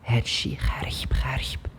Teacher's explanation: Instantly the غ becomes خ because the glottis is opened. Therefore, it lets the air through, it doesn't produce much vibration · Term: voiceless sound